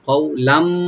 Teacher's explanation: কওলাম মারুফা, কওলাম মারুফা, কওলাম মানে হলো কথাবার্তা ব্যবহার, মানে যেটা জবান দিয়ে হয় আমরা বলি কওলান। কফ এখানে হরফে লিন, আর একটু ডিপ করে করবো